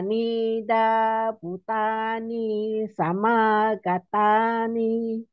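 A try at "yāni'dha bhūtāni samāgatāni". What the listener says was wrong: But you must bu is long. So yani da butani.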